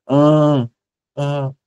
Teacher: Esse som nasalizado sai então pela boca e pelo nariz. E se eu tampo, claro, o nariz para produzir um som como esse, eu tenho um som estranho, mas ainda sai som, porque sai tanto pela boca quanto pelo nariz, né?